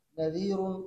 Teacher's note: اسی طرح نذیر، یہ را جو ہے نا کیا نام ہے ماقبل مقصور ماقبل یا ساکن ہے، ماقبل یا ساکن کی وجہ سے اس را کو باریک پڑھتے ہیں